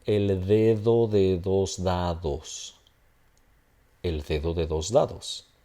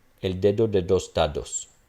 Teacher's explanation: none of them is the beginning of the utterance and none of them is after a nasal. Therefore, they will all be the fricative.